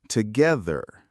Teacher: The word together has a flap t, so it sounds like together.